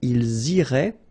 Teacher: make the liaison as well. You get this S and then the vowel after. So ils iraient, and then if you look carefully, you get A-I-E-N-T.